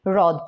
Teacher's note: হ এর সাথে যদি র ফলা যুক্ত হয় তাহলে কিন্তু সেটা সরাসরি র উচ্চারিত হবে